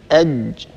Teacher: الجيم من صفاتها أنها حرف مجهور، يعني هي ليست من حروف سكت فحثه شخص، الحروف التي يجري النفس عند النطق بها. الجيم هي حرف شديد لا يجري النفس عند النطق بها، ويهتز الوتران الصوتيان عند النطق بها. يعني حينما أقول مثلا أج وأضع يدي هنا على الحنجرة، سنلاحظ اهتزاز الوترين الصوتيين.